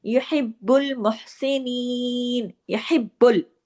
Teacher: बा पे तशदीद है, सख्ती से जोड़ के दोनों, यानी तशदीद ये कहती है कि नीचे दो बा है, यहिब बुल।